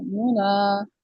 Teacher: नून को हमने हल्का सा अदा किया, और हमने ना को पूरा अदा किया, ठीक है। तो ये होगा, इसको कहेंगे इजहार मारोम।